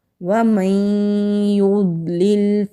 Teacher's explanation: نون ساکن کے بعد یا آ رہا ہے تو زیادہ زور ہم یا پر دیں گے، ادغام کریں گے غنہ کے ساتھ، اور ضاد مستعلیہ حروف میں سے ہے تو موٹا پڑھیں گے۔